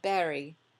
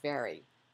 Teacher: a B for V substitution might be noted